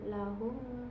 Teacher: mim sukun bertemu dengan huruf hamzah itu dibacanya jelas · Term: Idhar syafawi